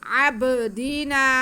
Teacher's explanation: با ساکن حروف قلقلہ میں سے با، تو ہم با کے بعد کو جنبش دے کے پڑھیں گے. عین پہ زبر ہے، دال کے نیچے بھی زیر ہے، ان کو کھینچنا تو بالکل بھی نہیں ہے.